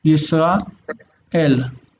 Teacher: You can hear the aleph again breaking the two vowels apart.